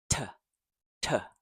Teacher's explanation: T has, so it's strong puff of air like P.